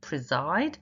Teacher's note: Preside, the first syllable is unstressed.